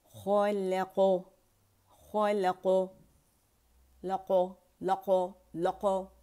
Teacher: لا باریک ہے, خا موٹا ہے, خا اور قاف بھی موٹا ہے, اور قلقلہ آخر میں سے سٹاپ کریں تو خلق خلق لقو لقو لقو.